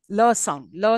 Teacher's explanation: lateral like in L low sound low sound where the air is released from the sides of the tongue